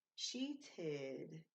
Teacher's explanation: So we have an extra syllable. It's an id sound and an extra syllable.